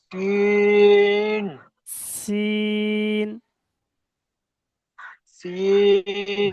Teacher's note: ওটা জিহ্বার আগা দিয়ে সিন